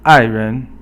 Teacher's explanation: 爱 人 is fourth tone, and then it's actually the ren is not second tone, but it's just a neutral tone.